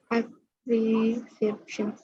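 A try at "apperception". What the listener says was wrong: Is it appre or apper? Apper? Have you learned of perception? You can see that word here, no? Perception, just add app in front of that, a perception.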